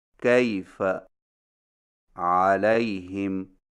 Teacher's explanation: یائے لین کو یائے مدہ کی طرح کھینچ کر نہیں پڑھا جاتا، بلکہ اسے نرمی کے ساتھ بغیر کھینچے پڑھا جاتا ہے